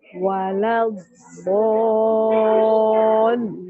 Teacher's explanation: Nah, Ibu sekarang waladdo-nya 6 harokat.